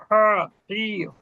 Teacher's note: একই জায়গা থেকে, মধ্যখান থেকে, কণ্ঠনালীর মধ্যভাগ